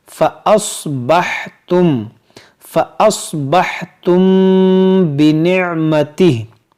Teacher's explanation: मीम साकिन के बाद बा है, तो यहाँ पर होगा इख्फ़ाए शफवी, यानी यहाँ पर भी गुन्ना करेंगे